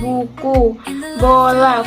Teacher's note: bahasa fonem B fonem B muncul dalam kata-kata seperti buku bola fonem ini berbeda dari fonem p dalam hal penggunaan getar pita suara · Fonem ini berbeda dari fonem P dalam hal penggunaan getar pita suara yang menyebabkan bunyi B lebih bergetar.